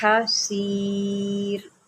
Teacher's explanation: یہاں پر حلق سے حا نکالے اور سین کو سیٹی کے ساتھ نکالے